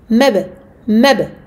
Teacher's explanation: Ba. Qalqala. On lâche le makhraj du ba aussitôt.